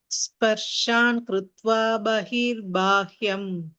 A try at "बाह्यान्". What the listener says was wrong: Bahyam, it is Bahyan. Yam, it is not him, Yan.